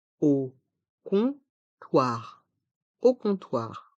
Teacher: contoir les deux voyelles a et U font le son o dans le mot comptoir le O et le M sont une voyelle nasale et font le son h le P est mué au comptoir